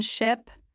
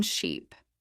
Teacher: In ship, the mouth is more relaxed. Short sound. In sheep, the sound is longer with a slight smile. If you stretch ship too much, you may accidentally say sheep.